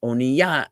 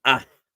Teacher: because the patach precedes the hey, I enunciate the hey